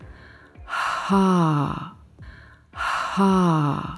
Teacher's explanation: your ha is deep, pure, soft and breathy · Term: sexy voice